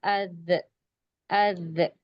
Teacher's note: زبان جو ہے دانتوں کی کنارے کو ٹچ ہو رہی ہے، تب ذال کا مخرج ادا ہو رہا ہے۔ زبان کی نوک اور اوپر دانتوں کا کنارہ۔